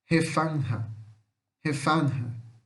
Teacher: Então é um A que puxa pro E. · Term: som do A